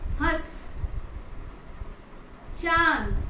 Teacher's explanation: मुंह से आवाज आती है, इवन नाक से भी आवाज निकलती है। इवन चांद, मुंह से भी आवाज निकलेगा और इवन नाक से भी, जो कि ध्वनि बनकर निकलता है, उसे हम अनुनासिक बोलते हैं।